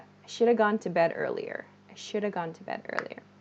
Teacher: this should have is reduced to shoulda